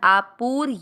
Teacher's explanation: पु की मात्रा बड़ी लंबा खींचना है